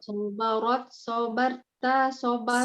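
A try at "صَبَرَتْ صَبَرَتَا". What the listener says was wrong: Sobarot, sobarota. Rohnya fathah.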